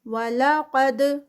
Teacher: قاف ہیوی، دال کا کلکلا